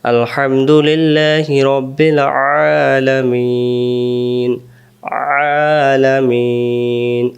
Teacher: আইন অক্ষর হলকের মধ্য থেকে একটু চেপে পড়তে হয়